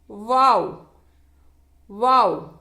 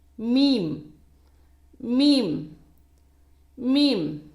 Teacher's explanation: இவை இரு உதடுகளுக்கு நடுவில்ிருந்து உச்சரிக்கப்படுகின்றன. வாவை உச்சரிக்கும் போது உதடுகள் இரண்டும் பிரிந்திருக்க வேண்டும். பா மீம் இவ்விரண்டை உச்சரிக்கும் போது இரு உதடுகளும் சேர்ந்திருக்க வேண்டும்.